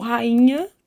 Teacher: Por exemplo, se eu pegar uma palavra tipo rainha, o I é tônico, mas como a sílaba seguinte é NH, nasaliza esse I